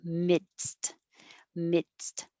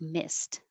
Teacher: you have to stop the airflow with your D, mid, and then release it for the S, midst, and then stop it again with the T